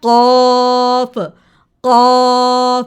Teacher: इसको मुंह की तरफ से अदा नहीं करना, इसको आपने ज़बान की पिछली साइड से टंग के रूट से अदा करना है